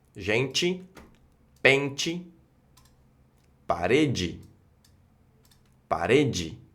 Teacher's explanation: por agregar la letra E vamos a tener estos casos de chi y ji